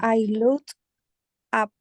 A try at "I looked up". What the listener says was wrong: Okay, the problem is it's not looked. No es una T. It's a K. I looked up.